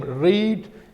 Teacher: in non-rhotic accent, r is pronounced when it comes in the beginning and it is followed by a vowel sound.